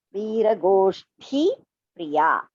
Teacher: Go is Alpa Prana, Ti is Mahaprana